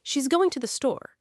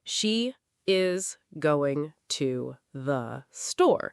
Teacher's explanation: It sounds more like, she's going to the store. The is gets swallowed into the contraction. The two the becomes almost a single blurred sound, to the. And the stress lands on going and store. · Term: sentence rhythm